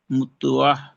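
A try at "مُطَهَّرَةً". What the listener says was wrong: হাডি দুবার হবে, তাসদিদ আছে যেহেতু। মুতহ হা। মুতহ হা।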